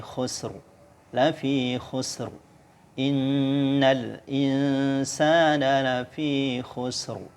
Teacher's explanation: ro-nya sukun karena wakaf, kemudian sebelum ro itu ada huruf yang berharokat sukun, dan sebelum huruf yang berharokat sukun itu ada huruf yang berharokat dhammah dibaca tebal